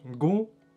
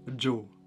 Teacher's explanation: Das heißt auf Gegisch Gu, G-U, Gu, mit nasalem U. Und auf Toskisch Ju.